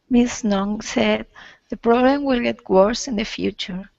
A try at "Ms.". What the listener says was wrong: Okay, and also try Ms. with a Z. Ms. Instead of Miss, because he said Mrs. and you said Miss. Yeah, it's a Z sound.